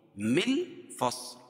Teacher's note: صاد کو موٹا پڑھیں گے کیونکہ حروف مستعلیہ میں سے ہے، اور وقف کی صورت میں یہ لام کے نیچے جو زیر ہے اس کو جزم سے بدل لیں گے.